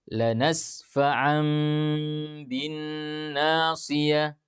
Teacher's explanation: bacaan akan dirubah menjadi suara mim, bukan lagi suara nun.